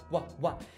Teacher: quando você vai fazer what, você tem uma semi-aproximante bilabial